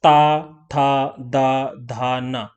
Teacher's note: जो टंग का आगे वाला पोर्शन है वो हमारे दांत से टच हो रहा है